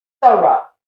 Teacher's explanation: the punch, the stressed part is th, and the rest is just weak, it's out of Play-Doh, so we just kind of mold it.